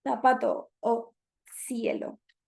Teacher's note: como interdental tal como pronuncian algunos españoles